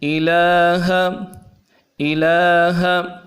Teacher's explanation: لام کے اوپر بھی کھڑا زبر ہے، اس کو 1 الف کی مقدار میں کھینچنا چاہیے۔ اور اخیر میں جو لفظ پڑھا ہے ہا، نرمی والا ہا ہے، اس کو انتہائی نرمی کے ساتھ پڑھنا چاہیے۔